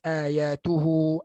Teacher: Yang diringankan bunyi antara hamzah dan mad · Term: hamzah tashil